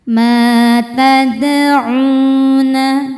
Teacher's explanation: Karena dal sukunnya ini sukun asli bawa bawaan dari kalimah tadauna dan berada di tengah-tengah kata. Maka dal ini kita pantulkan dengan pantulan yang kecil. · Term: qolqalah sugro